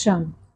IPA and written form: ʃən (sion)